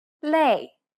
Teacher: it becomes similar to the a sound in the word play however try not to carry over the y sound too much try to relax your jaw and say it as if you're